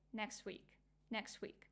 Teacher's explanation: For example, in the next week, people would say something like next week, next week. It's really hard for your articulation, for your tongue, to put this t and go from t position to w position. That's why they drop it. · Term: elision